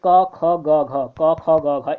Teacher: क ख ग घ, इनका कंठ ही होता है